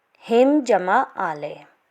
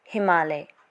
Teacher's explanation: जैसे इसके कुछ उदाहरण, हिम जमा आलय। हिम का अंतिम स्वर अ, आलय का प्रथम स्वर आ के मेल से दीर्घ स्वर आ का विकार उत्पन्न होता है, जिस कारण हिम जमा आलय की संधि होगी हिमालय।